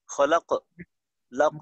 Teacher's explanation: কলকলাটা মোটা করতে হবে, ঊর্ধ্বমুখী থাকবে কলকলাটা।